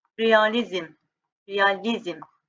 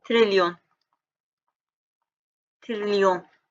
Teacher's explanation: vurğu sona düşdü, son hecanı qüvvətli deyirəm